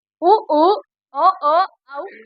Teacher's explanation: உ உ ஓ ஓ ஔ இதழ் குவிப்பதால் பிறக்கும்